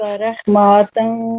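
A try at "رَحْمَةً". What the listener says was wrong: رحماتن نہیں کہیں گے, میم کے اوپر فتح ہے نا صرف. رحمت, رحمتاً وہیئ.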